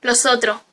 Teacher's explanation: aspiración de la s final